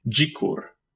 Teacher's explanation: it is a voiced post-alveolar or alveolopalatal affricate pronounced like the j in juice